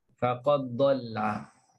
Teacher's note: Dia terus masukkan dal dalam dad. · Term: idgham